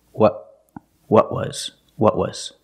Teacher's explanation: The tongue stays down because I stop the air in my throat. I tighten my throat to stop the air.